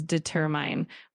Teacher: the correct emphasis is on the second syllable. So, it's pronounced as determine with the stress on the tur.